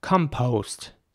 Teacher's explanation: the O at the end is very round